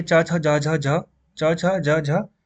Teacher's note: ये आपका तालुव्य, यानी कि आपका जो जीभ जहाँ से स्टार्ट होती है वहां से बोला जाएगा।